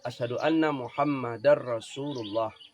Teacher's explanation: Itu tanwin bertemu dengan dar Rasulullah. Darnya itu tanwin bertemu dengan ra. Idgham atau bukan? Idgham apa? Idgham bila hunnah.